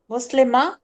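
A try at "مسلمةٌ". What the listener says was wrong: مسلم ماں تو کوئی چیز ہی نہیں تھی. حرکت پڑھیں حرکت. جب تک گرامر پڑھ رہے ہیں حرکت پڑھیں پوری. پورا اظہار کریں. آخری حرف کے اوپر فتح دے دوں گا، یعنی میم کے اوپر جو تنوین ہے اس کے اوپر فتح دے دوں گا اور اس کے ساتھ گولتا لگا دوں گا.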